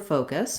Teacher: we have first syllable stress so the faux syllable is long and the cuss syllable is short and reduced and in this case the faux syllable is extra long because